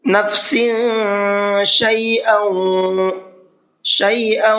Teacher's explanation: سین کے نیچے تنوین ہے اور تنوین کے بعد میں شین ہے، اور شین اخفا کے حرفوں میں سے ہے۔ تنوین کے بعد میں یا نون ساکن کے بعد میں آتا ہے تو وہاں پر اخفا کر کے پڑھتے ہیں۔